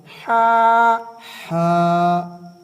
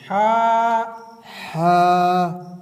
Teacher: حا حا ایک ہا ہوتی ہے جو 2 آنکھوں والی ہا ہوتی ہے اور یہ ہا ہے۔ ہا حا اس کو بڑی ہا بھی کہتے ہیں اور یہ حلق کے اندر سے ادا ہوتی ہے۔ ہا حا جی تھوڑی سی کوشش کرنے سے ہا حا جی آپ حلق کے اوپر ہاتھ رکھیں گے اور تھوڑا سا دیکھیں گے، غور کریں گے کہ یہ حلق کے اندر سے نکلے۔